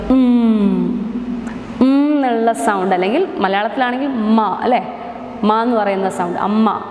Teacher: it is a bilabial sound the air is closed inside the mouth with the two lips the air is blocked inside the mouth